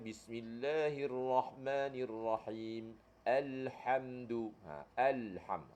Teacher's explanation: kedua-dua huruf ini iaitu huruf hamzah dan juga huruf ha berada di Pangkal kerongkong